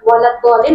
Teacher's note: Jadi sifatnya adalah istiqolah dan isti'la. Ya. Jadi lidahnya harus terangkat ke langit-langit.